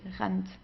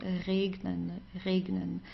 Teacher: this R from the throat but um yeah this is something typical German but it's also not that strong you know it's R it's sometimes just like touching it quickly